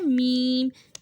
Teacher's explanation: میم بند ہونٹوں کے خشک حصے سے ادا کیا جاتا ہے